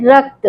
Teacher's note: जो क और त है वो बिना किसी स्वर की सहायता के आ रहा है, तो इसलिए वो रक्त जो है उसमें क जो है बिना स्वर की सहायता के आ रहा है, इसलिए उसको हम संयुक्त व्यंजन कहेंगे।